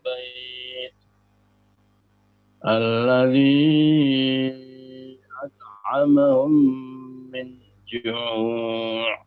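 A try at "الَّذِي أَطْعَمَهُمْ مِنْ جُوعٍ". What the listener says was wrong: Nah, minnya bukan izhar. Minnya ditahan. Min ikhfa itu. Coba diulang sama pantulan toknya kurang jelas.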